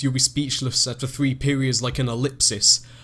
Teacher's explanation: you've got the repeated I and s sound, like the sibilants and the I rhyme